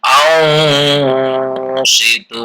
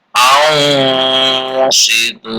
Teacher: dibaca samar-samar alias ikhfa, antara jelas dan tidak, antara izhar dan idgham dengan mendengung